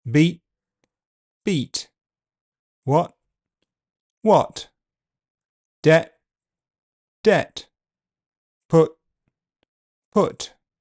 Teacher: Where t appears at the end, it could be made with no audible release.